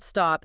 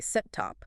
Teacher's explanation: it starts with an S and a T. There is no vowel between them. Right. But I don't need a special symbol above the S to tell me not to say sit top.